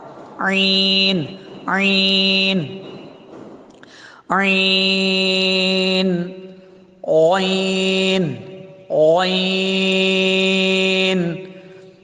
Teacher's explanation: حلق کے درمیان سے ہی بالکل ادا ہو جہاں سے حا ادا ہوتا ہے